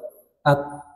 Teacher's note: huruf ta punya sifat hams dan syiddah hams mengalir udara syiddah tertahan suara